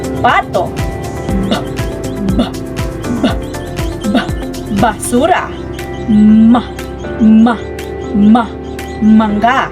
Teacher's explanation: Sa panglabi, ang labing ibaba ay dumidikit sa labing itaas